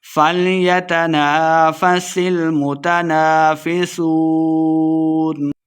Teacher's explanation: فیسون سین پہ سیٹی کی آواز ہے کہ واو پہ دونوں ہونٹ گول کریں گے اور واو مد ہے دو حرکات ہم نے لمبا کرنا ہے اور آخر پہ ہم نے وقف کا دینا ہے.